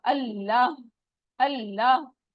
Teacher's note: ये बिल्कुल हलक के आखिरी हिस्से से निकलता है, अल्लाह का हा आखिरी हिस्से से निकलता है, और इसमें हवा बाहर को नहीं आएगी, आपके हाथ को टच नहीं होगी। ये ऐसे लगेगा जैसे आप अंदर को जा रहे हैं, जाके वो दिल पे लगती है।